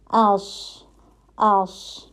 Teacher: ٹھیک ہے, لیکن ایک دم سے ہم نے آواز کو روک نہیں رہے, اس نہیں کر رہے. ٹھیک ہے, تو آواز جاری رہتی ہے, رخاوہ کی کوالٹی ہے